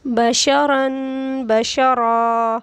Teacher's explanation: کیونکہ اس کے اوپر دو زبر ہے تو اس صورت میں بھی را کو ہم موٹا ہی پڑھیں گے